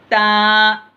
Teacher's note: ऊपर वाले दांतों को सनाया उलिया बोलते, सामने वाले जो दांत हैं ऊपर के, उसको सनाया उलिया बोलते। उसमें आप ज़बान की नोक को ऊपर वाले दांतों की जड़ में लगाइए तो ता अदा होता